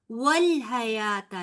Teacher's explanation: वल नहीं होगा, लाम को मोटा नहीं पढ़ेंगे